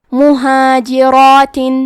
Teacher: کلمت مہاجرات میں حرف را کی حرکت ہے زبر، لہذا یہاں را کا حکم ہے تفخیم تو ہم حرف را کو موٹی آواز میں پڑھیں گے. کیونکہ اس پہ کھڑا زبر ہے تو یہاں مد الف ہے اور مد الف میں پیچھے والے حرف کا حکم لیتے ہیں تفخیم میں اور ترقیق میں تو ہمیں مد الف کو بھی بھاری آواز میں پڑھنا ہے.